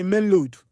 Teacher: instead of saying main road, they say main load, because the R is changed for L